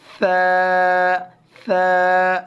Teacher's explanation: سین سیٹی والے حرف کی آواز بالکل نہیں آنی چاہیے، اگر آ گئی تو ہماری تجوید میں فرق آ جائے گا.